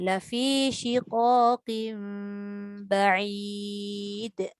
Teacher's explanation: Asalnya shiqaqin, tapi sebab nak jumpa ba tadi maka dia jadi shiqaqim ba.